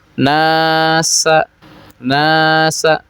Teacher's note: Nasa ada Alif sebelumnya berharakat fathah disebut Mad thi'i atau mad asli panjangnya dua harakat terus di situ ada alifnya disebut Alif tarqik karena huruf sebelumnya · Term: mad tabi'i